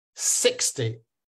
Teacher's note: I'm hitting the first syllable so it's 60